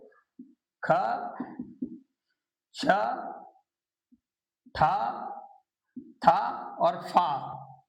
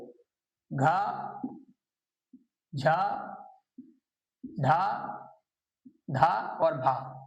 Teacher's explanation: जिसमें हा की आवाज आती है या ज्यादा वायु मुख से बाहर निकलती है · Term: महाप्राण